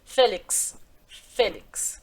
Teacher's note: esse x que tem o som de KS